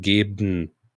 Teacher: das schwache E wird fast verschluckt sogar. Einige Leute betonen das überhaupt nicht. Das ist fast eher wie ein nasales N. Geben. Fast wie ein M sogar.